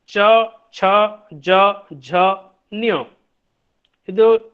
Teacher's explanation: जिन व्यंजनों के उच्चारण में स्पर्श तथा संघर्ष दोनों प्रयत्न किए जाते हैं उन्हें हम लोग कहते हैं स्पर्श संघर्षी ध्वनियां। उच्चारण अवयव उच्चारण स्थान को स्पर्श करने के बाद इतने निकट रह जाते हैं कि वायु घर्षण करती हुई बाहर निकलती है, तो ये स्पर्श संघर्षी ध्वनियां हैं।